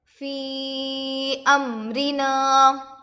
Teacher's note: فی امرنا، یا ساکن سے پہلے زیر ہے، یا یہ مدہ ہوگا، تھوڑا کھینچیں اور معروف پڑھیں